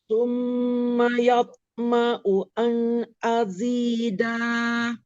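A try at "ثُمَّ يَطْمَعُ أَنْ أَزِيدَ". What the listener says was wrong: Nah, ini kol-kolah ya. Maka dipantulkan yalto. Terus azid di sini tidak dibaca azida karena tidak ada alif.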